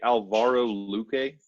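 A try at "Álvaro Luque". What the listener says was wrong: Alvaro with an accent on the A. Alvaro Luque.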